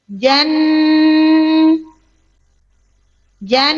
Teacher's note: Suara dengung atau gunah ketika nun dan mim bertasdid menancap di pangkal khaisum jan. Jan langsung dipangkal khaisum.